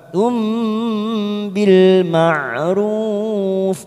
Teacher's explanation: mim sukun bertemu ba, bacaan iklab, kita tekan 3 ketuk, siap masuk pada huruf ba.